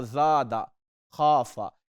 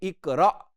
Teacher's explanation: بڑی نرمی کے ساتھ زادہ ہم پڑھ رہے ہیں اور اس کے اوپر کوئی جھٹکا نہیں دے رہے، خافا پڑھ رہے ہیں الف مگر کوئی جھٹکا نہیں دے رہے، جبکہ اقرا یہاں پہ آپ کو جھٹکا محسوس ہو رہا ہے۔